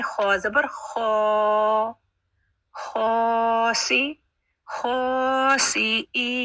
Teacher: خا ہیوی بھی ہے اور کھڑا زبر بھی ہے خا اپنے مخرج پر گلے کے بالکل اوپر والے پورشن میں